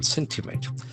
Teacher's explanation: We can see that the accent falls on the first syllable.